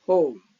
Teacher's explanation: But in American English, it's pronounced with a monophthong. So this is monophthong.